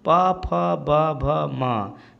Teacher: ओष्ठ से बोला जा रहा है